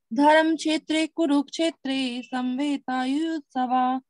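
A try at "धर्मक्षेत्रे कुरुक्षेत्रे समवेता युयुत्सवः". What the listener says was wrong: लेकिन आपने आ का पूरा उच्चारण नहीं किया। धर्म क्षेत्र नहीं है, धर्मा क्षेत्रे। धर्मा, धर्म नहीं, धर्मा। धर्म क्षेत्रे कुरुक्षेत्रे समवेता नहीं, समावेता, माँ पूरा है, समवेता युयुत्सवः, माम का नहीं, मामकाः, मामकाः।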